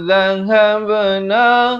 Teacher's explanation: Za di hujung lidah. Dhahabna ada lantunan khokholah surah di sini.